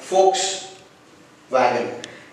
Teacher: As it's a German word, the letter V should be pronounced as F and letter W should be pronounced as V here